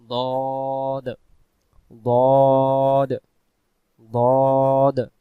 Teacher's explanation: দদ অক্ষর মারির দাঁতের গোড়া থেকে মোটা করে পড়তে হয়।